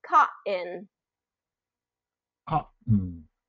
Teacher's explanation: then a vow and the N where the vow gets dropped where the vowels getting dropped here and that t becomes more of a glottal stop